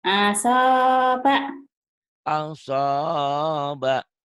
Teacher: Asoba, gitu aja yang panjangnya so-nya doang, Bu.